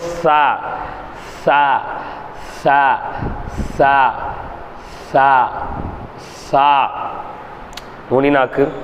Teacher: நுனிநாக்கு மேல் பல்லினுடைய ஓரங்களில் பட்டு லேசாக காற்று வெளியாகும் முறையில் சாவு உச்சரிங்க